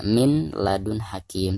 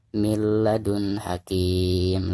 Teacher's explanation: nun sukun di sini itu harus di idghomkan langsung ke huruf lainnya yang ada di depan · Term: idgam bilagunnah